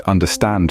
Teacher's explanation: The word understand, for example, has the stress on the stand. So its pattern is unstressed, stressed.